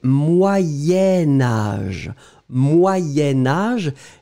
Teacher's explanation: La difficulté ici, en fait, c'est que comme je vais le lier à âge, Je vais le prononcer Moyen-Âge.